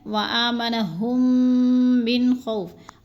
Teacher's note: ادھر میم مشدد ہے تو اس میں ہم نے غنہ کرنا ہے